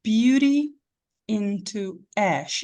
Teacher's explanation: eu conectei essas duas palavras aí consoante com vogal som de consoante com som de vogal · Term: linken